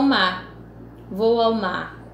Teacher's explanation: Então esse mar com acento, não mar com R, porque o R não foi pronunciado, mas é escrito com R no final